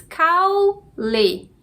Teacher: a gente tem aqui duas sílabas caule a sílaba mais forte é cal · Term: paroxítona